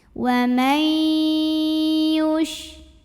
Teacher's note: Wa mai ada idgham bi gunnah karena ada nun sukun yang menghadapi huruf ya. Cara bacanya nunnya masuk ke ya, wa mai disertai dengungan, tahan.